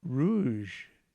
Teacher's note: the tongue tip is pulled back a bit